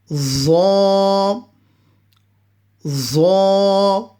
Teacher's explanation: Za is pronounced from the tip of the tongue touching the front, the edge of the front two teeth